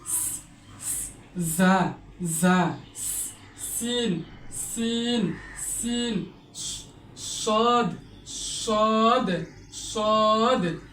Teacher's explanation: 12 নম্বর মাখরাজ, জিহ্বার আগা সামনের উপরে 2 দাঁত ও নিচে 2 দাঁতের মধ্যখান থেকে জাসিন সদ উচ্চারিত হয়।